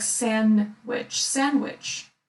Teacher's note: you can say sandwich, but usually no one pronounces d